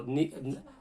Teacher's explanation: So even though the sad is a full mouth letter, the ra is going to be empty because of the kasra there.